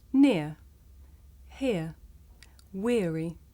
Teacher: the shape the mouth makes changes from the beginning of the sound to the end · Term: diphthong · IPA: ɪə